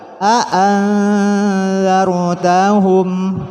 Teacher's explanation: Ro sukun jatuh setelah harokat fathah maka harus dibaca tebal.